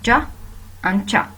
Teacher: Then I will move to the third feature of the manner of articulation, which is affricates. Actually, it happens by shortly obstructing the airstream completely and then releasing it.